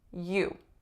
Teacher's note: on its own it's a nice ooh tense vowel